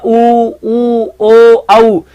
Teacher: होठ का मतलब होता है उसकी आकृति के अनुसार ऊ ओ औ, यानी जब आप उच्चारण करते हो तो आपका मुख विवर वॉलीबॉल की तरह गोल होता है